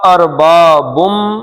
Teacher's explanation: اربابم، بن نہیں پڑھنا کیونکہ آگے میم آ گیا ہے، تو یہ ادغام کا قاعدہ ہے، ادھر سے نون نہیں پڑھا جائے گا، میم پڑھا جائے گا۔